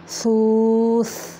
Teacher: یکون الناس کالفراش المبثوث، با قلقلہ ہے اور سا کو نرم طریقے سے پڑھیں گے، یعنی زبان کی نوک اوپر والے سامنے کے 2 دانتوں کے سرے سے لگا کے